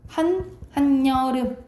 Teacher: 앞에 받침이 있고 뒤에 이, 야, 여, 요, 유가 오잖아요? 그러면 니은이 첨가돼서 소리가 난다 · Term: 니은 첨가 현상